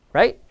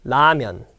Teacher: In English, there's a two L sound, L and a R. But in Korea, there's no R sound. Okay? So, you have to say it more like a L sound.